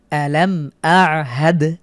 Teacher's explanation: মিম সাকিনের পরে হামজা হয়েছে গুন্না ছাড়া স্পষ্ট করে পড়বো আলামদ শেষে দালের উপরে সুকুন থাকার কারণে কলকলা করে পড়ছি